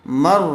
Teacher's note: را مشددہ. مر، یہاں را سے پہلے زبر آیا ہوا ہے اس لیے یہاں پر را کو پر کر کے پڑھیں گے